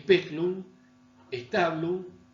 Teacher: Y stabulum y no stablum, fíjense como la voy a marcar con el color negro, esta sílaba, esta es una sílaba átona, no está acentuada. La de speculum y la de stabulum no está acentuada. Y por lo tanto se oye menos y la gente no la repite. Por eso dice speculum, stablum, y de ahí genera los cambios que se avecinan.